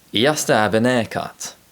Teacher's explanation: You'll notice that the n sound is inserted at the beginning of haircut.